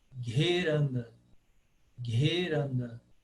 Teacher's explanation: Você tem que, aos pouquinhos, ir inserindo esse H aspirado aí no meio da letra.